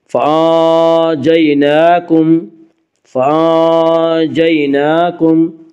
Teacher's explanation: نون کے اوپر کھڑا زبر ہے، کھڑا زبر کو ایک الف کے برابر کھینچ کر پڑھیں گے